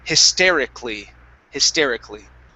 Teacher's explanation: we skip right over the vowel A, okay, and we say hysterically